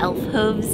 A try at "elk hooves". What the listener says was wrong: Elk hooves, not elves. Elf.